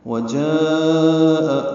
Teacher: الف مدہ کے بعد حمزہ آنے کی وجہ سے اسے مد واجب بھی کہتے ہیں۔ ہم اسے 4 حرکات سے زیادہ لمبا کرتے ہیں، 5 حرکات یا 6 حرکات۔ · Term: مد متصل